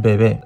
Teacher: We can clearly see the difference between these two B sounds in the word bebe, where the first B sound is a hard B sound because it comes after nothing, while the second B sound is a soft V sound